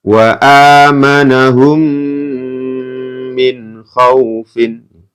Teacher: dibaca mendengung karena ada mim sukun bertemu dengan mim hukumnya adalah idgham mimi ini ya latihan Idam Mimi dibaca mendengung